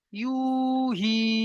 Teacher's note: দুটো সব মাদ্দা এসছে, একটি এসছে ওয়াও মাদ্দা, একটি এসছে ইয়া মাদ্দা। তাহলে আমাকে দুটোকে দুটোকে এক আলিফ পরিমাণ টান দিয়ে পড়তে হবে।